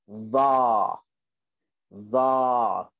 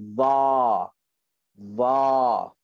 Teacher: Hujung lidah, hujung gigi atas, tekankan. Okay, dan huruf ini adalah dalam kategori huruf tebal.